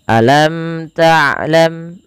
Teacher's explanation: mim dan mim jelaskan karena ia ada namanya izhar syafawi. Dijelaskan dan tidak boleh ditahan. Tidak boleh dibaca alam tlam dengan menahan bunyi mimnya.